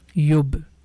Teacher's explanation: letter ba is one of echo letter. So here the sound is bouncing back